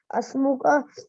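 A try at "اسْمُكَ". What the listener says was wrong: You see, there is nothing here on this alif, is it? But it is actually not, it's a hamza. And when we separate it, there is actually a kasra under it. It is ismuka. It's not asmuka.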